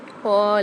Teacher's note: قاف کے ساتھ الف مد آ رہا ہے، قاف کو موٹا پڑھنا ہے